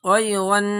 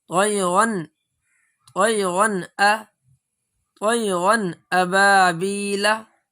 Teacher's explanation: نون کو ظاہر کر کے پڑھا جائے گا، نون کو ناک سے باہر پڑھا جائے گا۔ جیسے طیرن، یہ آواز ناک میں جا رہی ہے، ناک میں آواز نہیں جانی چاہیے۔ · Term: اظہار